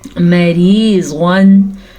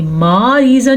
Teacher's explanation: मीम पे ज़बर है, तो आपने मीम को खींचने की गलती नहीं करनी, मारीज़न नहीं पढ़ना, ठीक है।